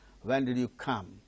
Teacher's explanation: When and come. These two words only are stressed in that particular sentence.